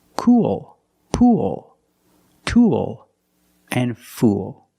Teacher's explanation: the same spelling double o plus L and the same pronunciation it's the long u sound plus the dark l